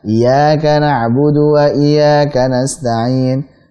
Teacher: Harusnya iya ditekan, ditasydid, dia baca iyyaka na'budu wa iyyaka nasta'in.